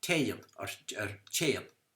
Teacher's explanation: in Ulster it's disyllabic because they pronounce the slender GH as Y. They say Tayan or Chayan.